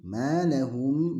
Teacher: Malahum manya dipanjangkan 2 harokat. Ini adalah mad tabi'i, 2 harokat. Malahum, panjang 2 harokat ini bisa kita ukur dengan cara, yakni dengan mengepalkan tangan kita kemudian membukanya, atau sebaliknya, jadi membuka tangan kita atau menutupnya.